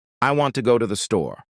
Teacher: The words want, go, and store are stressed. The other words I, to, and thee are much faster and softer. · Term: stress-timed language